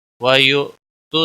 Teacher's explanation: حمزہ تھوڑا جھٹکے کے ساتھ ادا کیا جائے گا